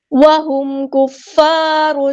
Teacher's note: میم ساکن پہ اظہار شفوی ہو رہا ہے، ہم یہاں پر ٹائم نہیں دیں گے